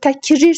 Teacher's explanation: Təkrir sözün də vurğu sonuncu hecəyə düşür.